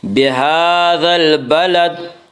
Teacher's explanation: کھڑا زبر کو 1 الف کے برابر کھینچ کر پڑھیں گے